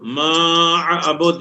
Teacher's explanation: ما عبد یہاں بھی مد ہے، 4 کے برابر کھینچیں گے